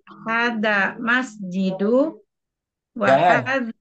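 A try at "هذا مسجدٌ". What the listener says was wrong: Jangan masjidu. Tanwinkan saja.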